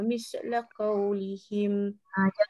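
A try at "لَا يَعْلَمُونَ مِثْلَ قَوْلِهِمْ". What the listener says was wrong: Jangan miss. Ya'lamuna mithla qawlihim. Bunyi desiran pun tak boleh. Hujur lidah keluarkan. Mithla qawlihim.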